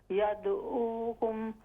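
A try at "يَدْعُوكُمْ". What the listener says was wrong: यदऊना यदऊ ये हमजा की आवाज़ है आइन यदऊ यदऊकुम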